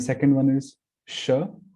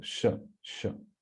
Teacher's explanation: the second one is sha, so it touches the talu, like cha varga.